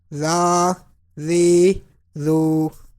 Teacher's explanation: zal will be pronounced without whistle